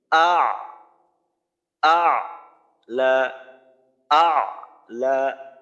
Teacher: উচ্চারণটা শুরু করতে হবে হামজার মাখরাজ থেকে হলকের শুরু থেকে আ পরে গিয়ে হলকের মাঝে আটকাবে